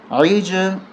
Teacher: یہاں قلقلہ ہوگا جیم پہ عج آواز 2 دفعہ آئے گی